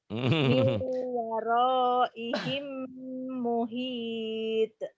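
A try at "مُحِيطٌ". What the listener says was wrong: Muhitnya bukan muhite, muhito gitu. To kan ini huruf Jawa O. Miu waraihim muhito gitu ya.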